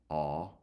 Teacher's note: O is the low back unrounded vowel